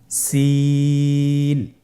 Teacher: সিন হরফটি উচ্চারণ ক্ষেত্রে অবশ্যই তিন আলিফ টেনে পড়তে হবে। সিন হরফটি বারিক হরফ পাতলা করে উচ্চারণ করতে হবে।